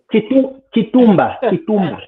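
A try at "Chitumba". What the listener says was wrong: no, when I read it, you were saying Kitumba, Kitumba.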